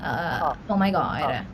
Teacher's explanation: Like when I'm speaking in my normal, like regular Indian accent, it's pretty like there's whole bodied. But like when I'm doing the American accent, it just gets a little more vocal fry